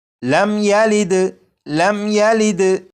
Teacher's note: اسی طرح یہاں پر بھی دیکھیں میم کے اوپر جزم، لہٰذا یہ میم ساکن ہے، میم ساکن کے بعد یہاں پر یا ہے، جب میم ساکن کے بعد یا ہے تو اس میم ساکن میں بھی غنہ نہیں کریں گے اور اسے پڑھیں گے لم یلد۔